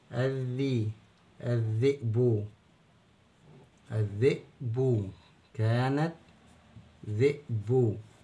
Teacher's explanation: يبقى هنا اللام ما بنسمعش صوتها ونبدا الحرف الدال مرتين ساكن ومتحرك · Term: اللام الشمسيه